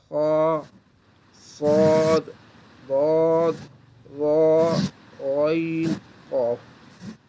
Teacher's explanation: उनको अदा करते वक्त ज़बान की जड़ हमेशा तालु की जानिब बुलंद होती है, इसलिए ये हुरूफ हमेशा पुर पड़े जाते हैं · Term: इस्तिअला